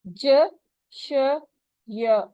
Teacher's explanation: زبان کے بیچ سے ہیں ج، ش، ی